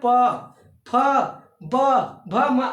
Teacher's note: बोलते समय दोनों ओठ आपस में स्पर्श करें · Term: ओष्ठ